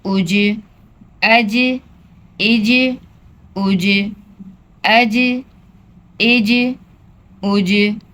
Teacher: जीम भी उर्फ कलकला में है। इसकी भी आवाज पलट कर वापस आएगी।